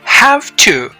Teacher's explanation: i destress the function word the preposition to to say it as ta the voicelessness of the ta meaning no vibration in the vocal